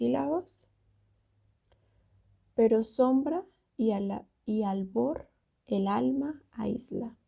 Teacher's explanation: cuando en una palabra termina con vocal y la siguiente palabra empieza también con una vocal se van a juntar formando una sola sílaba